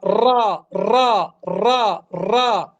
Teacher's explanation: التقاء اللسان مع أعلى الحنك مع وجود ذبذبة بسيطة، يسمى راء. راء راء راء راء.